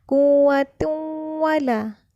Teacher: tanwin bertemu dengan huruf waw, maka hukumnya idgham bila gunnah